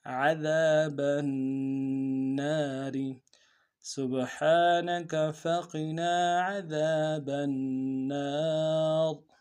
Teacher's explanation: نون کے الف مدہ ایک مقدار میں کھینچیں گے، را کو باریک ادا کریں گے